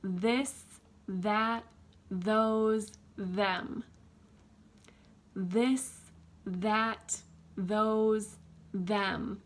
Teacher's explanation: you can see my tongue coming out each time in between my teeth and it's nice and wide it's not skinny and it's in between my teeth and you